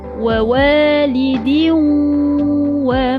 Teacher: Idgham maal ghunnah. Masuk masuk pada huruf wau. Dah muncung dah bibir dan kena lama